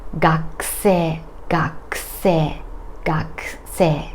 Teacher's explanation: My vocal cords don't vibrate when I say k. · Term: devoiced